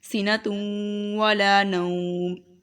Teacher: تنوین کے بعد واو ہے یہ حروف یرملون میں سے، تو یہاں پر ادغام پلس گنہ ہوگا